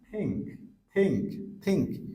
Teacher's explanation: জিহ্বার আগা সামনের দাঁতের গোড়ার সাথে জাস্ট লাগবে আলতা করে